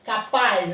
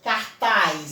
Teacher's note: a sílaba tônica é a última sílaba